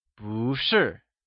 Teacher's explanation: bù, turns into bú , that is, it changes from fourth tone to the second tone, when used alongside another falling tone or fourth tone